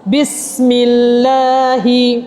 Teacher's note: lam dimulakan dengan syaddah fathah tapi dibaca dengan nipis. Bismillahi kita tak baca dengan cara bismillahi. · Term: lafzul jalalah